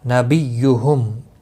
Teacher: میم ساکن کے بعد حمزہ ہے، اظہار شفوی ہوگا